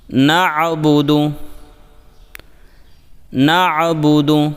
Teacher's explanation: یہاں پر عین ساکن کو حلق سے واضح کریں، اسے حمزہ یعنی نعبدو نہ پڑھیں